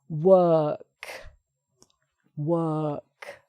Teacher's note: so no r just the k sound at the end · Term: er sound